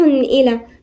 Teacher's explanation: إلى هنا في ألف صغيرة تمد مقدار حركتين زي المد الطبيعي · كادح تنوين وبعديها الهمزة، والهمزة من حروف الاستثناء اللي ما فيهاش غنة، فنقولها على طول كادح إلى، ما فيش غنة.